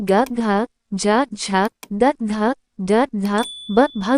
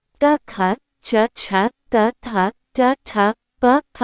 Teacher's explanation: घोष वह ध्वनियां विशेषकर व्यंजन होती हैं जिनमें स्वर रज्जु में कंपन होता है, जबकि अघोष वह ध्वनियां होती हैं जिनमें ये कंपन नहीं होता।